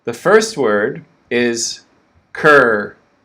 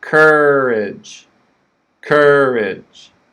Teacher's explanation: the first word is cur that's the stress cur strong cur and then we have the schwa courage courage okay you can see that schwa ridge it makes